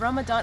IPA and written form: ˌræməˈdɑːn (Ramadan)